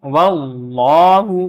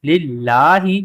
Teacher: اللہ کے لام سے پہلے والے حرف جو ہے اس کے اوپر زبر آ رہی ہے تو یہ پر پڑھی جا رہی ہیں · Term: جلالت